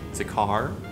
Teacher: if you're English, you like to drop the R's at the end of syllables